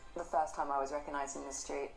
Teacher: the stress syllables first wreck and Street are brought out and they're pronounced slightly higher